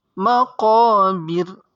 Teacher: sebelum ra hurufnya berharokat kasrah, maka ra-nya dibaca dengan tipis atau dinamakan ra tarqiq